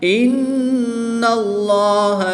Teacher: جلالت اللہ عز و جل کے لام سے پہلے حرف پر زبر ہے تو یہاں پر اس لام کو ہم پر یعنی موٹا پڑھیں گے · نون مشدد میں غنہ کر کے پڑھیں گے